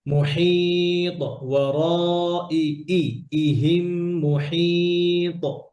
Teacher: হামজা শক্ত করে, হা আরো গলায় নিয়ে